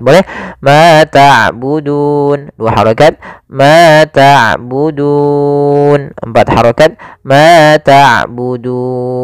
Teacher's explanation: Maka panjangnya du di sini boleh 2 harokat, boleh 4 harokat, boleh 6 harokat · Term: mad arid disukun